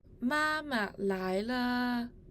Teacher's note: Even though the syllable le should be read with the neutral tone, it was read in tone 1 in the recording.